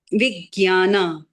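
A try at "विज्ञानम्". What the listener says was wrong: No, now it went back to Vigyan. It is not the right way to pronounce that word. This letter doesn't comprise of ga and ya. Okay, it is like I told you, some metamorphosis that has happened to the sound in Hindi.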